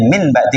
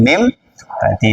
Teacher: mengganti nun mati dan tanwin dengan suara mim mati dari min ba'di menjadi mim ba'di. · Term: Iqlab